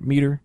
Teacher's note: So in English, if you have a two-syllable word, it's generally stress on the first syllable and de-stress on the second syllable